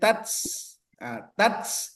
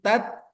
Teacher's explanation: kalau dia berbaris sukun dia ada hes atau ada aliran tapi tidak terlalu berlebihan